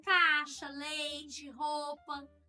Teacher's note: nós aqui do estado de Goiás, da região centro-oeste, nós falamos comendo essas vogais, né? A gente fala caixa, leite, roupa.